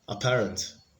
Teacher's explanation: apparent has the stress on the second syllable. It's a 3-syllable word